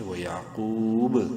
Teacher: یعقوب قلقلے کے ساتھ، کیونکہ با حروف قلقلہ میں سے ہے، وقفاً ساکن ہونے کی وجہ سے اس میں قلقلہ ہوگا